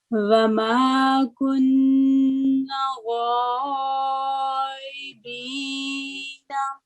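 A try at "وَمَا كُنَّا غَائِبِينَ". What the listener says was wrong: یہ دیکھیں یہ جو لفظ کنہ بولا آپ نے، کنہ، تو نون مشدد پر فتح اور ساتھ الف ہے، الف مدہ، تو کنہ اور غا ایک لیٹر کر کے اس کے بعد 4 سے 6 سیکنڈ لمبی کریں اور پھر دوبارہ سٹیمنا بنا کے دوبارہ پڑھیں، انشاءاللہ بڑا اچھا پڑھا جائے گا.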